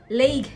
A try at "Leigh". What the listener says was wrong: Lee. No G. Lee.